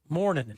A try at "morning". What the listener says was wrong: No, he added an N. He's pronouncing it with 3 N's. Morning. Morning.